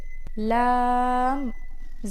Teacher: जबान का किनारा और ऊपर वाले दांतों के मसूड़े